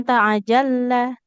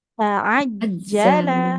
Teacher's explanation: kita tekan bukan huruf lam tapi huruf jim. Jadi bukan ta'ajalla tapi ta'ajjala. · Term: jim yang ditekan